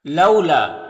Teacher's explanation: یہاں پر واو ساکن سے پہلے لام کے اوپر زبر تو واو لین ہوگا، اسے نرم آواز کے ساتھ جلد پڑھیں گے